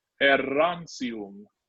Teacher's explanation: So the first sound, you know, because it's an E, it's going to be e. We have a double R here, which means we want it rolled. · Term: rolled R